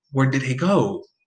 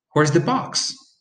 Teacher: it has fallen intonation. It means it falls at the end.